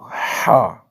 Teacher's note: وسط حلق سے حروف حلقی میں سے یہ ہا ہے